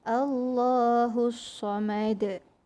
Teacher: Okey, jadi kita akan bunyikan qalqalah dia. Qalqalah kubra, qalqalah besar sebab dia di hujung ayat.